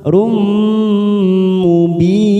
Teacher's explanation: tanwin bertemu mim namanya idgham bi gunnah. Kita tekan 3 ketuk. Rum mubin. Mad arid li sukun 4 harokat kita panjangkan.